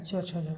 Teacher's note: स्पर्श कर रहा है, स्पर्श संघर्ष करके निकल रहा है